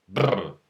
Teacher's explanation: Other languages create trill consonants by vibrating the lips for the sound brr